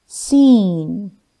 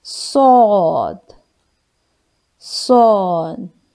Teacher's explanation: read scene with whistle and thin sound scene while sword with whistle but full sound